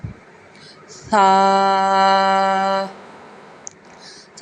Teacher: ثا، ثا نرمی سے ادا ہوگا، زبان کا سرا اوپر کے دانتوں کے اندرونی کنارے سے ادا ہوگا